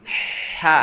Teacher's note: dari tengah tenggorokan seperti kita pedes jadi ada hembusan seperti itu